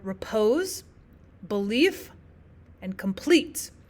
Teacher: one unstressed syllable followed by one stressed syllable. For example, we have the word repose, belief, and complete where our stressed syllable comes at the end.